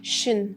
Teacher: But in English pronunciation, it is shin, shin, sh, plus schwa, plus n.